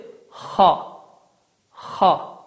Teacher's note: Xa hərfinin məxrəci, yəni çıxış yeri boğazın əvvəlidir. Boğazın əvvəlindən çıxan bu səs Azərbaycan dilində olan x səsinin eyni ilə oxşarıdır. Yalnız qalın hərf kimi tələffüz olunur. Bu hərfin ərəb əlifbasında səslənməsi xa, xa deyərək səslənir. · Bu hərfin çıxış yeri və ya məxrəci boğazın əvvəli sayılır. Boğazın əvvəlindən çıxan bu səs Azərbaycan dilində olan x səsinin eyni ilə oxşardır.